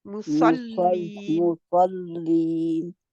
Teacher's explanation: मुसल्लीन स्वाद के लिए मोटा और लीन के लिए फिर बारीक